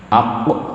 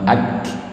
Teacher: Aq atau ak. Kalau qaf itu isti'la ke atas, kalau kaf itu istifal ke bawah, itu bedanya.